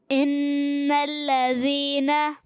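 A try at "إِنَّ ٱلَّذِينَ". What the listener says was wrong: Good. اچھا تھوڑا سا غنہ اور تھوڑا بڑھا لیں، ان الذین،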